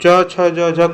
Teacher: च छ ज झ सभी को बोलने में स्पर्श करता है हमारा जीभ जो है तालु से, इसको जो है स्पर्श संघर्षी कहते हैं।